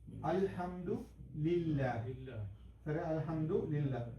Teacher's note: இந்த இடத்துல அல்லாஹ் இந்த இதுல வர வந்து அதுக்கு ரெண்டு ப்ரொனவன்சேஷன் ஒன்னு வந்து அல்லா சொல்லி ஃபுல் மவுத் தான் நாங்க ப்ரொனௌன்ஸ் பண்றது எம்ப்டி மௌத்தா ப்ரொனௌன்ஸ் பண்றது. பிஸ்மில்லா வந்து அல்லாஹ்வுக்கு முன்னுக்கு இ வருது. அப்படித்தானே? அப்படி வந்தா அல்லாஹ் வந்து வெறும் சாப்ட்டா தான் வச்சக்கணும். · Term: சாப்ட் அல்லாஹ்